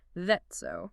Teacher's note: The T cluster softens and affricates, the vowel shifts to an E.